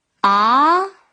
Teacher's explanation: 第二声是阳平声，逐渐升高